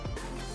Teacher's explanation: it is pronounced on the fourth tone so it's going down